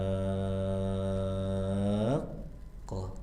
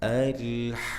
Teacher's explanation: cara pengucapannya ha dibaca enam harakat berarti maksimalkan. Enggak boleh dua, enggak boleh empat ya. Minimal 6 harakat ya.